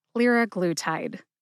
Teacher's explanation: Emphasize lir and glue. Glue gets the most emphasis.